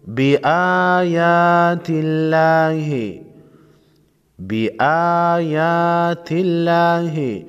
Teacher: لفظ اللہ سے پہلے حرف تا پر زیر ہے، لفظ اللہ کے لام کو باریک پڑھیں گے